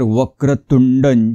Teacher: जोडाक्षर आहे इथे हे जोडाक्षर आहे वक्रतुंड पुन्हा इथे जोडाक्षर आहे त वर सुद्धा किंचित आघात येईल